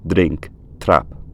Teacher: Many traditional dialects of English do dentalize t and d if they come before a tapped r sound.